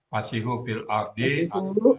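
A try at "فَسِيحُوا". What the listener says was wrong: Fasihu kurang sukun, Bu ya. Waunya. Fasihu, waunya sukun.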